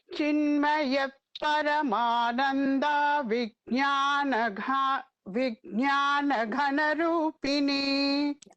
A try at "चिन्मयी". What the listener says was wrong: Chinmayi is the nama with the Dirgham there.